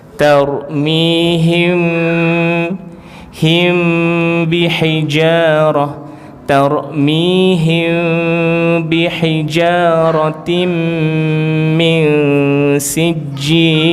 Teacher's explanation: kita nak sebut macam mim, tapi jangan kita tutup rapat, buka sikit biar ada apa nama tu, udara boleh keluar lah, boleh keluar sikit.